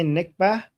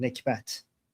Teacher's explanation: in Arabic they say nikbah, but we Iranians pronounce the t at the end, nikbat. But nikbah is something Israelis and people who follow the Arab-Israeli conflict are familiar with.